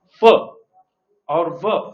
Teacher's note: in case of fur or verb sound you would notice that your upper teeth comes in contact with your lower lip